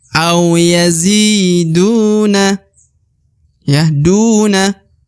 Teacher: mati maka Zi dipanjangkan dua harakat au yazi au yaziduna kemudian huruf du dibaca panjang dua harakat karena di depannya terdapat wau sukun atau wau mati